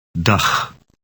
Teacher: It ends with a sound that resembles the Scottish word loch, but softer.